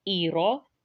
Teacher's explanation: یہاں پہ را موٹا پڑھا جائے گا کیونکہ اس کے اوپر فتحہ ہے، اگر اوپر فتحہ یا ضمہ ہو تو را موٹا پڑھا جائے گا۔